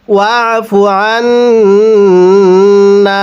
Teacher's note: আগে আইনকে নুনের সাথে লাগিয়ে গুন্নাহ করার পরে আমরা এই নুনের মধ্যে এক আলিফ টান দিব, তাহলে ওয়াফু আন্না এরকমভাবে পড়ব।